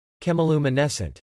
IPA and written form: kɛmɪlumənɛsənt (Chemiluminescent)